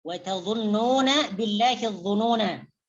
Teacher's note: Apabila dibaca waqaf maka kita berhenti di huruf non dan memanjangkannya.